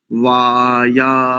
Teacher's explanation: दीर्घ का उच्चारण काल होता है लगभग 2 सेकंड। हमारे जो हाथ में जो नाड़ी जहां पर देखते हैं, जहां पल्स चेक करते हैं, उसकी गति जितनी 2 बार, यानी 2 बार जो उसकी गति होती है, इतना समय दीर्घ के उच्चारण के लिए होता है।